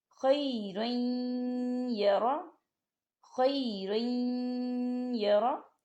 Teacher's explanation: ہم تنوین کو یا کے ساتھ ملائیں گے اور تنوین کو یا کے اندر مدغم کریں گے